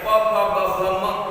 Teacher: હોઠ બે ભેગા કરવા જ પડે અને છૂટા પડે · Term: ઓષ્ઠ્ય